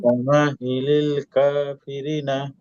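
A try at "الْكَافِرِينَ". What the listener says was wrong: হ্যাঁ, এই যে রি টান আছে, কাফিরিনা।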